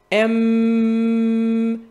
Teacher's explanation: quand je fais le son M, j'ai de l'air qui sort par mon nez, en fait toute l'air puisque ma bouche est fermée.